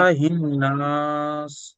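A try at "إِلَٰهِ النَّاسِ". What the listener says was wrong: और लंबा, नाक में रोक लीजिए आवाज को, इलाहिन। हाँ, रोक के रखिए आवाज को, हाँ।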